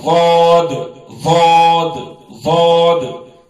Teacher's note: یہ زبان کا کنارہ اوپر کے دانتوں کے مسوڑوں کو لگانے سے یہ غاد نکلتا ہے